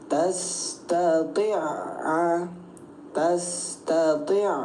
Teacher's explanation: Bunyi ain yang pertama kita abaikan. Jadi gak dianggap ain yang pertama langsung kita tempelkan ke ain yang kedua. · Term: idam mutamasilain